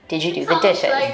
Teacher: ask a yes no question with a level tone or a falling tone